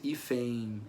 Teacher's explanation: eu tenho o som de F, um som de E nasal e uma semivogal I.